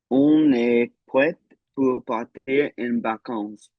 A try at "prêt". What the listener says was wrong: I think I heard a T right there. Prêt. Don't pronounce it. And then en vacances. En